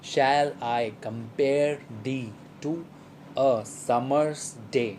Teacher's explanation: firstly there is an unstressed syllable and it is immediately followed by a stressed syllable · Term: pentameter